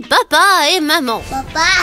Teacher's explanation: Les consonnes bilabiales M, P, B et la voyelle ouverte A.